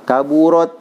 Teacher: Itu merubah makhraj ta ya. Makhraj ta ini dia di ujung ya, sedikit saja dia ada desisnya ya, ada udara yang keluar. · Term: hamas